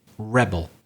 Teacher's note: So if it's a noun, again, let's follow the rule. Stress the first syllable.